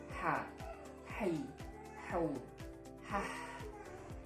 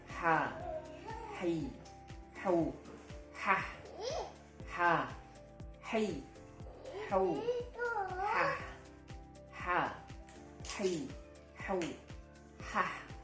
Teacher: ha suaranya tipis karena memang tempatnya ada di tengah tenggorokan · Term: tenggorokan bagian tengah